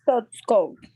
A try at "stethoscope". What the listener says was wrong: Yes, so you say ste, and then you have to pronounce the TH.